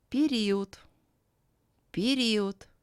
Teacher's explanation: Е is pronounced as E, and O is pronounced closer to U than to A. The voiced letter D becomes voiceless, as it is at the end of the word.